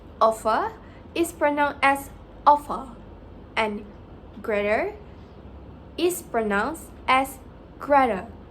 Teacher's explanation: BBC English is characterized by specific phonetic features such as non-rhoticity, where the R sound isn't pronounced after vowels in words.